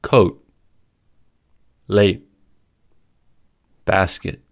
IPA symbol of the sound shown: t